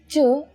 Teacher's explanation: Ch is the same as the CH in the English word chain without aspiration. When you say Ch with aspiration, it becomes Ch.